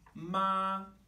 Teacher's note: if the pitch of my voice was flat, this means mother